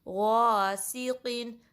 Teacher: غائن میں ایک اور چیز انشور کرنی ہے کہ اس میں خراش نہ آئے، لائک خواہ کی ساؤنڈ نہ آئے بالکل بھی، ٹھیک ہے۔ اور غائن کا جو مخرج ہے یہ ادنى الحلق سے نکلتا ہے، یعنی کہ جو حلق کا سب سے اوپر والا حصہ ہے نا ادھر سے غائن ادا ہوتا ہے.